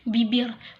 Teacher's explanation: Vokal I termasuk dalam vokal tinggi dengan posisi lidah berada di bagian depan, contohnya pada kata bibir.